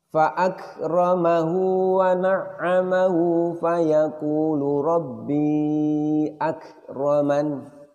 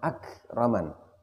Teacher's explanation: Begitupun juga pada lafadz akraman, akraman. Kita tahan dulu suaranya, kita keluarkan dulu siddahnya, baru kita keluarkan hamznya.